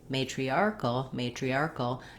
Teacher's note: the k to the ul sound, kul, to that dark L. There's just a little hint of a schwa in there, in that syllabic dark L at the end.